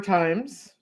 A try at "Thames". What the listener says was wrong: Thames. Thames. Silent H.